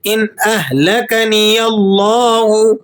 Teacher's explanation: یہاں چونکہ یا پر زبر لگا ہوا ہے، آپ لفظ اللہ کو موٹا کر کے پڑھیں گے